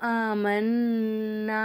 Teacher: வலாக்கில் லா யஅலமூன் வ இதா லகுல் லதீன ஆமனூ காலூ ஆமன்னா وَإِذَا لَقُوا الَّذِينَ آمَنُوا قَالُوا آمَنَّا ஆமன்னா அப்படிங்கும்போது நூனை வந்து சத்து செய்யப்பட்ட நூனை ஒரு செகண்ட் நல்லா அழுத்தி உச்சரிக்கணும்